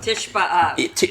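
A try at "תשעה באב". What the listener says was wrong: No, not Tish. Tisha B'Av. Tisha. Tisha.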